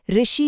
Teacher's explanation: आजकल की हिंदी में इसका उच्चारण र और इ को मिलाकर मतलब ऋ जैसा होता है।